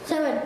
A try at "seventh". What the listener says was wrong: Seventh. Don't forget our th sound.